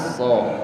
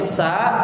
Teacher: Jadi rasakan bahwa so itu seperti sa karena satu makhraj, cuman bedanya tebal sama tipis.